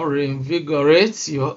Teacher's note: Here in reinvigorate, you see that we have stress on the 3rd syllable. 1, 2, 3. So it is on V.